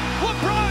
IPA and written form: ləˈbrɒn (LeBron)